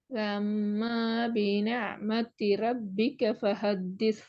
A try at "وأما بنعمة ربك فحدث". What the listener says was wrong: திருப்பி ஒம்மான்னு தான் போனீங்க, பாத்தீங்களா? ஒம்மான்னு போகுது. وأما